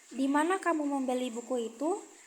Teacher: Nada naik di kamu membeli dan turun di buku itu menunjukkan bahwa pertanyaan menuntut jawaban informasi, bukan sekadar ya atau tidak.